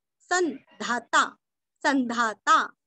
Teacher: अनुस्वार का उच्चारण आधा न, अनुनासिका से सन